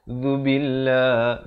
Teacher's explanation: lafz jalalah dibaca nipis di sini dengan kadar panjang 2 harakat